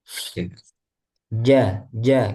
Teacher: Jangan sampai ada udaranya Jim karena dia termasuk apa jahar